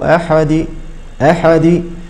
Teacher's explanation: نلاحظ أنه من أجل هذه القلقلة كسرت هذه الدال، وهذا خطأ شنيع. نعم، لأن صاحبه زاد كسرة في القرآن، قل هو الله أحد أحد، أو إذا قال أحد أحد، فخلط صوت القلقلة بكسرة أو فتحة أو ضمة هكذا، فهذه أيضا من الأخطاء الشائعة.